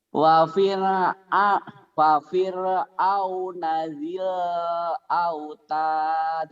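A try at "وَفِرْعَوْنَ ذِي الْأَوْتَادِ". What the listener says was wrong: Tuh ya, ainnya masih kurangnya masih garing ya. Wa fir'au ain wa fir'auna dzil autad.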